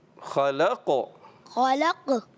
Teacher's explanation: قلقلہ آواز لوٹ کر آئے گی